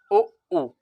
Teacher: जैसे ही मैंने उ पढ़ा तो ओठ मेरे किसकी तरह हो गए, गोल हो गए, यानी वृत्त की तरह हो गए।